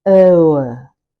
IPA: əʊə